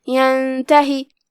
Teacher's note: پھر کلمت ینتہی ہے، یہاں نون پہ جزم ہے، پھر حرف التا ہے، یہاں بھی حکم ہوا اخفاء تو ہم نون کو بغیر ظاہر کیے ہوئے لیکن غنہ کے ساتھ یہ حکم کو ادا کریں گے